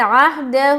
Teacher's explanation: ہا کے اوپر مد بھی ہے، تو 3 سے 4 الف کی مقدار کھینچیں گے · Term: مد منفصل